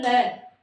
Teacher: दोनों तरफ से पास से हवा निकलती है · इसको जब हम बोलते हैं ल तो जीवा के दोनों तरफ से वायु है वो अचानक से बाहर निकलती है, तो इन्हें कहेंगे पार्श्विक व्यंजन।